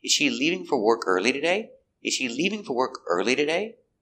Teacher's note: we stress important words leaving is the verb and early expresses the time it's important